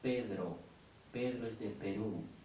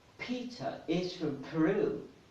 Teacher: the letter P in Spanish sounds softer than in English